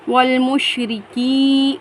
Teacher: کاف یا زیر کی، یا ساکن سے پہلے زیر ہے، کاف کے نیچے، اس کو ہم ایک الف کی مقدار کھینچ کر پڑھیں گے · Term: یا مدہ